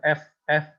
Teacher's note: F itu kan ada anginnya ya. Jadi gigi dengan bibir